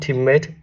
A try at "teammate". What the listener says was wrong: Teammate nó bị cái phát âm nó hơi bị Việt hóa, hiểu không? Nó cứ bị teammate đấy, là teammate. Đấy, nó phải làm A, nó không phải E nữa ha.